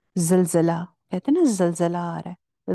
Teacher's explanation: اوپر والے دانتوں پہ زبان نہیں لگتی، تو نیچے والے دانتوں پہ ہی لگتی ہے. تو اس لیے نارملی ٹھیک ہوتی ہے. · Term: زا